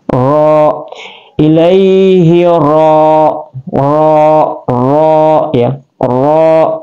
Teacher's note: Ra adalah tarfatul lisan, keluar di ujung lidah. Ra dia tafhim, hukum tajwidnya tafhim.